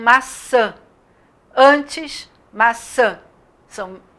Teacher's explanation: esse enzinho ele dá um som nasal para esse a como se em cima desse a tivesse um tio como acontece